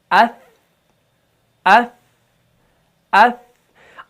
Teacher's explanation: آواز تھوڑی سی جاری رہتی ہے اور اس کے اندر تھوڑی سی نرمی پیدا ہو جاتی ہے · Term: صفت رخاوت